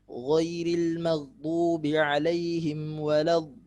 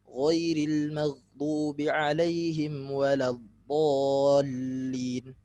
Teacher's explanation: panjangnya harusnya dibaca 6 harokat seperti mad lazim